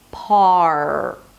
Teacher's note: it's this hollow, strange sound that is not an R, it's not a W, it's not anything.